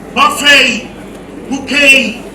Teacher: The terminal consonants are silent, and the E becomes a diphthong.